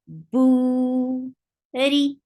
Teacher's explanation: Ra is slight here, because whenever Ra is with Kasra, it is light, and light Ra sounds like ri.